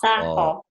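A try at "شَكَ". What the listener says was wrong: Ini ho baru ho. Ini ko, baju koko. Koko, baju koko. Syako.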